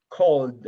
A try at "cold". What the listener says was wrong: No, no, it's not call it.